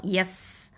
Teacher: சீன் வந்து ஹம்ஸ் பண்ணணும், காற்றை வெளியில் விடணும், ஹம்ஸ் பண்ணணும்.